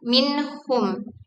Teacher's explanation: izhar menjaga suara nun tetap terdengar jelas sebagai nasal alveolar meskipun berada di dekat huruf-huruf halqi yang dihasilkan dari area tenggorokan. Contohnya, kata minhum diucapkan dengan jelas tanpa perubahan pada suara nun.